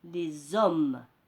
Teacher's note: Le H muet accepte la liaison. Exemple, l'homme, on dit les hommes. Ça donne une nouvelle syllabe.